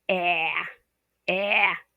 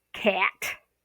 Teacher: The short A is actually ah, ah, especially if you live near Chicago.